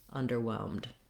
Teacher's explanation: Over, long, short, or under, long, short. In underwhelmed, both the word under doesn't really get that much stress, so I'm going to be short on both of those syllables.